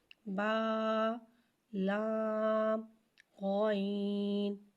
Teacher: غین کو ایک الف یعنی 3 مقدار کھینچ کے پڑھتے ہیں. غین حرف مستعلیہ ہے لہٰذا اسے ہم موٹا پڑھیں گے. غین کی آواز حلق سے ادا ہوتی ہے. موٹی آواز نکلے گی اور حلق سے ادا کریں گے.